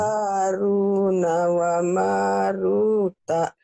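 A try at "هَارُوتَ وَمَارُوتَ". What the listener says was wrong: bukan Haruna, Haruta ya.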